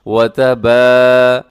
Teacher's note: اب با کو میں نے کیوں لمبا کیا؟ کیونکہ با کے ساتھ الف ہے